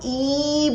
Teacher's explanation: इसको बोलते हैं और इसमें कम टाइम हम लगाते हैं लेकिन जब हम ई बोल रहे हैं तो उसको हम थोड़ा लंबा खींचते हैं और उसमें हम टाइम जो है वो ज्यादा लगाते हैं